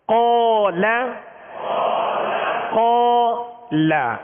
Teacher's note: جب لام پڑھیں گے تو لام کو باریک پڑھیں گے، یعنی قاف کی وجہ سے ہم لام کو پر نہیں کریں گے · قاف کے ساتھ الف بھی پر ہو گیا، قاف کو بھی پر پڑھیں گے حروف مستعلیہ میں سے